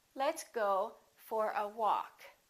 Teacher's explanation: Go gets some stress, but walk gets a lot more stress.